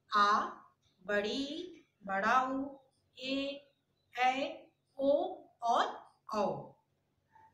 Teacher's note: हृस्वरों की अपेक्षा इनके उच्चारण में दुगुना समय लगता है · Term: दीर्घ स्वर